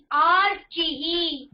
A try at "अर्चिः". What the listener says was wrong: நீங்க முதல்ல கரெக்டா படிச்ச ஹ்ரஸ்வ ஆகாரா தானே இருக்கு, இங்க தீர்க்க ஆகாரா இல்லையே. இங்கேயும் ஹ்ரஸ்வ ஆகாரா இருந்தா